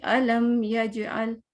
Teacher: علم یجعل, میم کو ظاہر کرنا ہے, جیسا ہے اس کو ویسے ہی ظاہر کرنا ہے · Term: اظہار شفوی